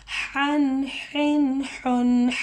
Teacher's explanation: ہا کا جو آواز ہے وہ حلق سے آئے گی, سینٹر آف تھروٹ سے آئے گی